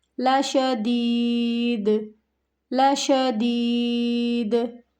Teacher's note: دال یہاں پہ کیا ہے؟ ساکن ہو جائے گا، قلقلہ کے حروف میں سے ہے دال